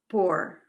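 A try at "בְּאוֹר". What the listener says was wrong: Beor. That two dots separates it from the other. So you have to, it has another syllable.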